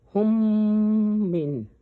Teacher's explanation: تو میم ساکن میم متحرک میں ادغام ہو جاتا ہے، یعنی اس میں ضم ہو جاتا ہے، جس کی وجہ سے میم متحرک مشدد بن جاتا ہے، اس کو ادغام شفوی کہتے ہیں یا ادغام متماثلین بھی کہا جاتا ہے، اور میم مشدد کو غنہ کر کے پڑھنا چاہیے، اور اس غنہ میں بھی 2 سیکنڈ ٹائم دینا ہوتا ہے۔